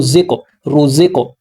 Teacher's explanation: زا کو جب قاف سے ملانا ہے تو قلقلہ کرنا ہے، قلقلہ کہتے ہیں ہلانا، آواز کا وائبریٹ ہونا، آواز کا باؤنس ہونا، آواز کا دوبارہ لوٹنا، یہ قلقلہ کہلاتا ہے۔